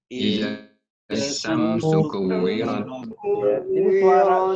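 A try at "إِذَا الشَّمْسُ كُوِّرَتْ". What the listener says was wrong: Jadi suara shin ini kan bertasydid ya. Sehingga suaranya langsung masuk. Jadi Idzas ya. Syamsu, syamnya jangan ditahan. Syamsu ku itu ada waw bertasydid, ditekan juga. Kuwirat. Ratnya itu ada huruf ta, kalau di waqaf dia ada hamznya, ya. Jadi kuwirat.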